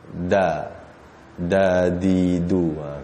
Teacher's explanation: Huruf dal ni lidah kita duduk belakang gigi.